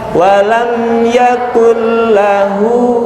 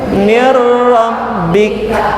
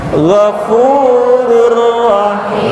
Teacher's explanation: Baik, kecuali nun tanwin bertemu dengan lam ra. Ya, namanya juga idgham bila gunnah, tanpa digunnahkan, berarti langsung aja bacanya